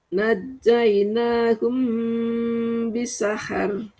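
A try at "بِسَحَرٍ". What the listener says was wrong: Itu mah tipis, Bu. kalau naikin pangkal lidah. Nah, jadi Ibu belajar naikin pangkal lidah. Ibu ada yang udah benar, ada yang belum naikin pangkal lidahnya ya. Ada yang berusaha naik ya, bisa, ada yang kurang naiknya. Yang tebal ya.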